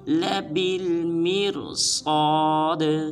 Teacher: آخر میں دال کو قلقلہ کریں گے